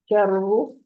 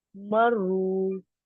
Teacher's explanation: चर्रू में मद नहीं है ना, पेश है सिंपल। चर्रू लंबा नहीं करेंगे, मर्रू में लंबा करेंगे क्योंकि आगे वाव मद है